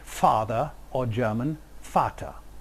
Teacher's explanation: the result in the Germanic languages is f, a labiodental fricative